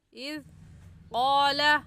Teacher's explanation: قا کے اوپر کھڑی زبر ہے، ایک الف کے برابر کھینچیں گے۔ اذ قال، ذال نرم حروف میں سے ہے، نرمی سے پڑھیں گے۔